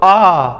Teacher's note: विवृत मतलब पूरा मुंह खुलता है।